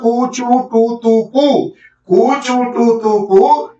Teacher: कु से कंठ चू से तालू टू से मुर्दा त से दंता और पु से ओष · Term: उच्चारण स्थान